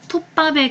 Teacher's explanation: 자, 마지막 톱밥의 경우는 된소리 되기가 일어나는데요. 앞 음절의 종성 비읍의 영향을 받아서 뒤 음절의 초성 비읍이 쌍비읍으로 교체가 됩니다.